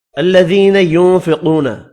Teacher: یا مدہ ہے، ایک الف کی مقدار میں کھینچ کر پڑھیں گے۔ ذی ينفقون، نون کا اخفا ہوگا، قاف پر پڑھیں گے۔